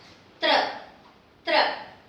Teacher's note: Dental T with R together.